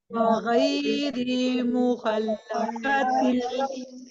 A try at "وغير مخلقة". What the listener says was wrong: गैरी नहीं आपने करना, रा की जेर को आपने स्ट्रेच नहीं करना है, उसको आप जल्दी पढ़ेंगे. वगैरी मुखल्लकतिल लिनुबय्यिन लकुम.